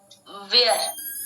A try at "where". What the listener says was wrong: वियर नहीं है, वेयर। आधा व है र, वेयर बोलो, वेयर।